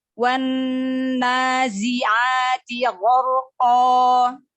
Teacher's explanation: Jadi lamnya tidak dibaca melainkan langsung diidghamkan atau langsung dimaksudkan ke huruf syamsiyah yaitu huruf nun yang ditandai dengan tasydid. Huruf nun tasydid juga wajib gunnah, wajib didengung sepanjang 2 harokat ya. Nah, juga di sini mat tabi'i dibaca panjang 2 harokat.